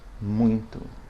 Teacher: the word muito has a nasalized UI diphthong